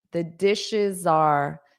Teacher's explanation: So notice that dishes are, you'll have a little bit of a z sound.